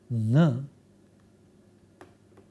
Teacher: the uvula is lowered for the flow of air through nasal cavity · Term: velar nasal